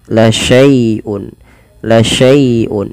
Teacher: dilembutkan karena dia ada ya sukun yang didahului dengan fathah karena di sini bacaan lin, maka dia lembut.